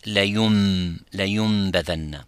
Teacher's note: So that Noon, it doesn't disappear, but actually it moves and it becomes like the Mim